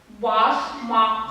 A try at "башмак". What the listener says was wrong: Башмак. Не надо глотать последний звук. Башмак. Башмак. Видите? Твердый звук А. Значит и К у нас. Башмак.